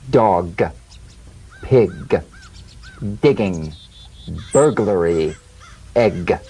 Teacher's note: You'll feel a crisp tap and a voiced pulsation of the back of the tongue. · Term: drum beat G